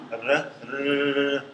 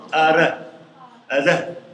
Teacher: But this tap or flap one, you block and release the air only once